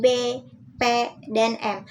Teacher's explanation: pertemuan antara bibir bawah dengan bibir atas disebut bilabial. Bunyinya seperti bunyi B, P, dan M.